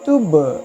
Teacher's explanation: جزم کے ساتھ اگر تا سے ملائیں گے تو اس کو قلقلہ کے ساتھ پڑھیں گے، آواز لوٹے گی، قلقلہ کے مطلب آواز لوٹے گی۔